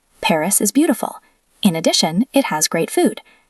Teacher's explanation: Remember the full stop after beautiful and the pause after addition.